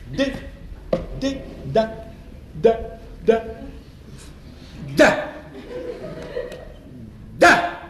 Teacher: La consonne D, par exemple, se prononce en donnant du bout de la langue au-dessus des dents d'en haut.